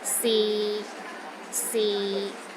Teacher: the sixth tone is low and steady but not as low as the fourth tone